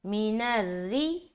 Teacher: را کو کیا کرنا؟ باریک رکھنا. کیوں؟ کیونکہ رائے مشددہ کے نیچے زیر ہے